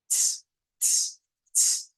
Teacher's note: Es un sonido africado que significa que es una combinación entre una T y una S.